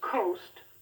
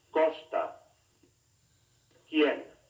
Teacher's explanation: The letters QU also do. The K sound, like the P and T, is pronounced without a strong puff of breath. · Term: Spanish K sound